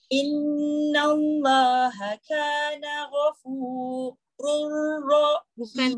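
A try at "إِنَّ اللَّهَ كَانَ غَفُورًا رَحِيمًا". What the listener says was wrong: Bukan rur.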